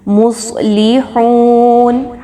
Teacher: آگے دیکھیے، مصلحون، صاد کو خوب موٹا کر کے پڑھیں گے، حروف مستعلیہ میں سے ہے یہ، مصلحون، ہا پیش واو ہو، اگین ہا کی حرکت کو بہت نرمی کے ساتھ پڑھیں گے، ہا موٹا نہیں پڑھنا اس کو، واو مدہ ہے، 2 حرکت کے برابر لمبا کریں گے، نون پر جزم لگاتے ہوئے وقف کریں گے۔